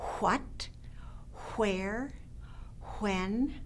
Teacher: for kids you want to pay particular attention to the wh it makes this kind of an Airy like sound